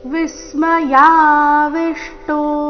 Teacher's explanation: ಎರಡು ವಿ ಅಕ್ಷರದ ಮೇಲೆ ಆಘಾತ